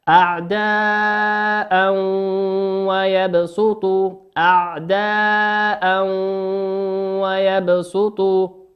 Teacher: وكلمة أعداء أعداء ويبسطوا، أعداء في نهاية كلمة أعداء تنوين أتى تنوين بالفتح أتى بعده حرف الواو، والواو من حروف الإضغام بغنة، يغن بمقدار حركتين.